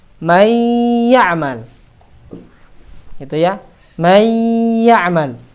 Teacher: Masuknya huruf nun atau tanwin, ya, masuknya huruf nun sukun atau tanwin ke dalam huruf ya atau waw tidak sempurna. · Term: idgham naqis